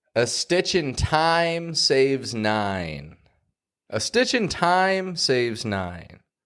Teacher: Notice how I put that emphasis on time. I raise my voice in that word.